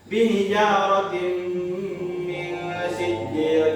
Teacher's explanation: Jadi tanwinnya ini menghadapi mim didengungkan.